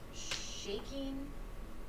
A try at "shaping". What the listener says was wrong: Shaping it. force it.